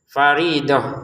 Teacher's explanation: Faridah di sini kita berhenti t-nya menjadi ha terbacanya ya.